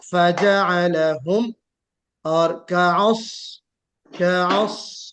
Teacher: कअस स्वाद निकालिए, सीटी बजेगी लेकिन हल्की सीटी बजेगी। क्यों? स्वाद में जो सिफत है वो इस्तिला की सिफत है। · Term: सफीर